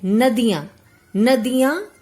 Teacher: जो हवा है वह मुख से भी निकलती है और नाक से भी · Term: अनुनासिक